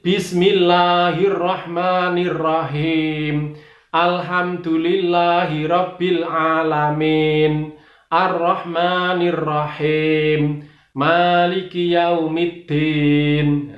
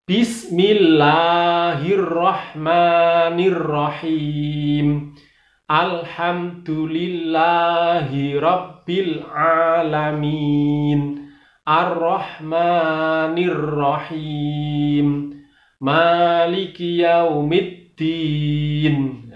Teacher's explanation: hampir seluruhnya itu tidak ada lafal e, tapi yang ada adalah lafal i